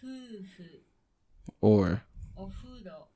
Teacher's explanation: Since there's no lip biting, sometimes foreigners hear this as an H sound.